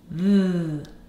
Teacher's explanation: The first sound I hear in the is th. Wow, my tongue is out. My teeth are on my tongue and it's vibrating. Th. That is the sound th.